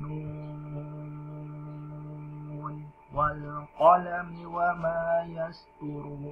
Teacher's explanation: Ini nun sukunnya yang terakhir itu dibaca dengan jelas juga